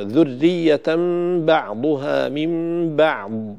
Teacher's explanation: الراء في ذرية قلنا لا بد من ترقيقها، عدم الشدة في الياء، وقد نبهنا قبل قليل على ذلك. الياء ليس حرفا شديدا، وإن كان مشددا من حيث التشكيل والضبط، لكن ليس فيه الشدة فلا ينقطع فيه الصوت. من بعض، الباء والعين حرفان مرققان فلا يصح تفخيمهما.